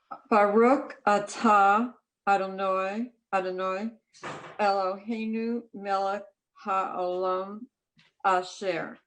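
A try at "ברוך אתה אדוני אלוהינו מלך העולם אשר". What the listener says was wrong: Okay, beautiful.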